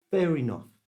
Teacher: To say this naturally, move the R from the end of fair into the beginning of the word enough.